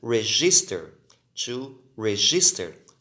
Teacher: Observe que a última sílaba não é mais forte e termina em consoante, vogal, consoante.